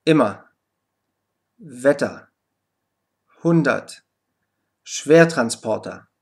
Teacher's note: unbetonten Endsilbe ER, die ebenfalls A ausgesprochen wird